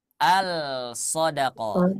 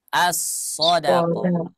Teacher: maka huruf lam yang tidak dibaca dinamai dengan Idgham Syamsi